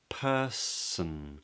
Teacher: purse followed by a schwa person purse purse person and then the tip of the tongue comes up to make an N